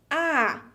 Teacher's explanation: the phoneme A will be pronounced with the mouth wide open, like this, A. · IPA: [a]